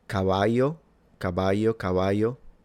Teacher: in Castillian Spanish from Spain. Please correct me if I'm wrong. This would have been pronounced a bit like a Y.